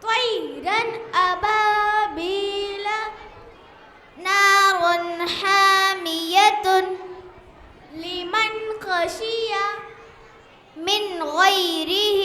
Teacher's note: اظہار حرف حلقی 6 ہے، حمزہ، ہا، عین، ہا، غین، خا. تنوین یا نون ساکن کے بعد حرف حلقی آئے تو نون کو ظاہر کر کے بغیر گننے کے جلد پڑھیں گے